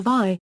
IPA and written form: ˈvi (vi)